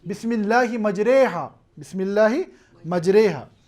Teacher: فتح کو کسرہ کی طرف مائل کرنا، الف کو یا کی طرف مائل کرنا، اسے ہم اصطلاحی طور پر کہتے ہیں کہ اس سے مراد ہے الامالہ، یا ہم کہتے ہیں ہی النطق بالالف الممالہ بین الالف والیاء الصحیحتین. · یہ الف کو اس طور پر ادا کرنا ہے کہ نہ یہ الف ہو نہ یہ یا ہو، الف اور یا کے درمیان اس آواز کو ادا کرنا